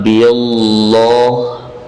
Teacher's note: Allah dibaca tarqiq, tipis. Billah, jangan dibaca dengan tebal.